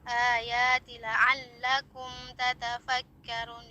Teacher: mim bertemu dengan ta, hukumnya izhar syafawi, jadi mimnya dibaca dengan jelas ya, dengan menyempurnakan karakter bainiyah daripada mim itu tersebut ya.